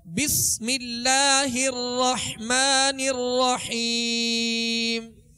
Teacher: با کے بعد سین ہے، سین حروف صفیریہ میں سے سیٹی کی آواز پیدا ہوگی